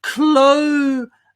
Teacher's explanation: The Z sound is exactly the same as the S sound, but I'm just adding my voice.